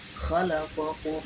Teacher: karena ada huruf mim mati menghadap huruf mim, maka membacanya harus didengungkan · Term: idgham mimi